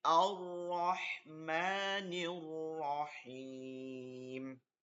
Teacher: লম্বা হা হলকের মধ্যখান নিয়ে পড়তে হবে।